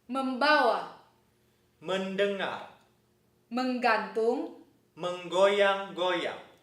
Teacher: m, n, and ng show nasal assimilation and appear with the b, d, and g afterwards